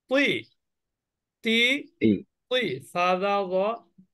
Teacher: জিহ্বার আগা উপরের দাঁতের গোড়া থেকে